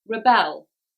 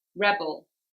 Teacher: when the word is being used as a noun the stress will be on the first syllable if the word is being used as a verb the stress will be on the second syllable